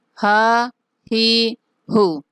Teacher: یہ حمزہ اور ہا حروف حلقی میں سے ہے، آپ کو یاد ہوگا کہ سینے والی سائڈ سے انتہائی حلق سے یہ نکلتے ہیں